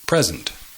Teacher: The emphasis is on the first syllable.